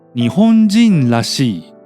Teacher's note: Since the word 日本人 has a nucleus, overall the pitch drops twice